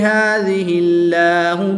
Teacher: جلالت اللہ عز و جل کی لام سے پہلے والے حرف کے نیچے زیر ہے تو اس لیے اس لام کو باریک پڑھیں گے، پر نہیں پڑھیں گے